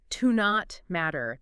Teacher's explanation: Yeah, you might hear it almost like one word, like to not matter. The T in not kind of blends into the M.